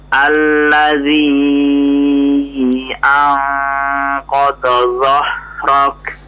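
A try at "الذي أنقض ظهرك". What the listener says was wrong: Ha besar ya. Dhah.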